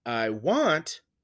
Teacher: we have the unstressed syllable first and then the stressed one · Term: iamb